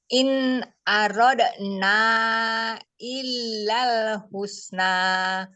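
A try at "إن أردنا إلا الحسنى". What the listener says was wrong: Ya, in aradna illal husna. Ya, itu bacanya ya.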